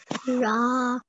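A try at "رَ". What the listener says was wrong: Okay, so it only carries a fatha. What do? You don't prolong it. Do you want to try again?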